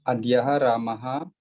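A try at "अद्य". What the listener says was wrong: Adya. No, we should not put visarga to Adya. Because the word Adya is avyaya. That is indeclinable. That is called avyaya. It never changes. There is no singular, plural or dual form for Adya. It always stands Adya.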